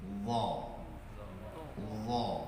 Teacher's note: Terus huruf dha itu sama, cuman dha ini dia bedanya punya sifat, yaitu sifatnya isti'la, tebal